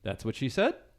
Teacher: he kept using an upward inflection